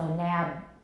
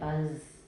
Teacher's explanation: Voicing only goes halfway through the final obstruent, but please don't forget the first half is still voiced.